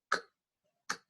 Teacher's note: Cuando yo hago ese sonido, K, K, las cuerdas vocales no vibran. Cuando no vibran, quiere decir que yo lo voy a pronunciar como una T, voiceless, ¿sí? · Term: sonidos sordos